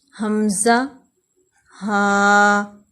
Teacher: انتہائی حلق سے، یعنی حلق کے آخری حصے سے، یہاں سے حمزہ اور ہا ادا ہوتے ہیں